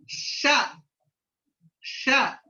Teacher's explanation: ష, ష అన్నప్పుడు ఒక ద్రోణిలాగా ఏర్పడుతుంది నాలుక. మరి నాలుక చిన్న ద్రోణిలాగా ఏర్పడుతుంది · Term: ద్రోణి కోష్ము, ద్రోణీకోష్మం